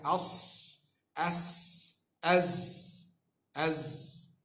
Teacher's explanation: Sirah huruf sad, huruf safir. Safir ni sad sin zai. Dia ada berangin sikit